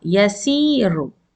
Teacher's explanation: This ra is heavy because it's with dhamma.